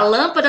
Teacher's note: a lâmpada teve a antepenúltima sílaba forte